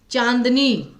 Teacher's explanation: तो चांदनी में एन पे फोकस आया नाक से ज्यादा आवाज़ निकली तो इसलिए यहां पर आपका अनुस्वार आएगा लेकिन अनुनासिक जो है